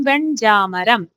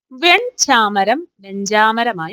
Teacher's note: പൂർവ്വവർണ്ണം പൂർവ്വവർണം എന്ന് പറഞ്ഞാൽ ആദ്യത്തെ വർണ്ണം മാറുകയാണ് ചെയ്യുന്നത് ഉദാഹരണം വെൺചാമരം എന്നുള്ള രണ്ടാമത്തെ വർണ്ണത്തിന്റെ വർഗ്ഗത്തിലേക്ക് ആദ്യ വർണ്ണം മാറുന്നു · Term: പരസവർണനം